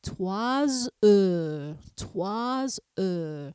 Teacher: I do pronounce that S, and a single S sounds like the buzzing of a bee. So you would say 3 heures, 3 heures. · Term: liaison